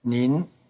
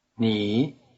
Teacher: Notice that 您 is in the rising tone, while the plain form of the word you, 你, is in the low tone.